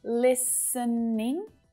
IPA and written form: lis (ə) niɳ (LISTENING)